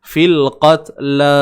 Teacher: bila kita berhenti, maka la ni akan dibaca dengan dua harakat.